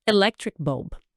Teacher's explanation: E o B no final é bem fechadinho, oclusivo.